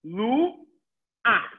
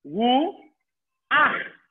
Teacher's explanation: When a patach is at the end of a word with a chet, I say ach.